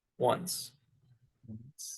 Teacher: because like there's not a T, but it's just going from because the N is like the same location, so it's kind of shifting between them. It just sounds like there's a T in there.